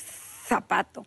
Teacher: los españoles crearon una Zeta Y esa Zeta está entre los dientes